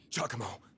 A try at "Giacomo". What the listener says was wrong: Giacomo, not Giacomo, Giacomo. With a J, not a G.